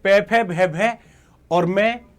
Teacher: जहां पर आपका जो होठ हैं वो चिपक जाते हैं। मतलब टच करते हैं। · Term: ओष्ठ वर्ण